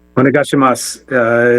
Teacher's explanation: it has a U at the end, but you don't pronounce the U